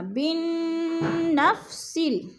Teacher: بن پہ غنہ ہے اور نون مشدد ہے، سختی سے جما کر پڑھیں گے۔